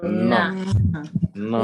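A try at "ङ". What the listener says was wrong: Na. So it's not na. When you're saying na, notice where your tongue is touching. Where does it touch where you're saying na? Where does it touch when you say na? It's touching the back of the teeth, right? Dental, na, right? So you don't want to touch the tongue there.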